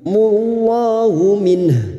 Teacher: lam jalalah yang didahului dumah kita baca tafkim · 2 huruf yang harus kita lunakkan, huruf nun dan huruf ha yang dibaca waqaf. Maka 2 huruf ini harus tetap terbaca.